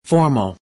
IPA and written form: ˈfɔːr.məl (Formal)